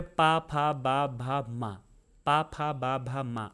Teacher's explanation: देखो आपका दोनों ओठों का प्रयोग कर रहे होंगे। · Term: ओष्ठ